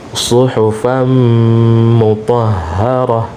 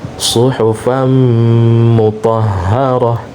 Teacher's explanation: Nah, di sini ada tanwin bertemu dengan huruf mim, ya. Maka tanwin dilebur ke atau dimasukkan ke huruf mim, ya. Disertai dengan dengung.